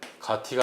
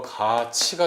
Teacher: 그 다음에 가티가 아니고 가치가 되죠. 자, 그래서 디귿이 이를 만나서 지읒으로 바뀌고 티읕이 이를 만나서 치읒으로 바뀌는 거, 이런 게 바로 국외음화입니다.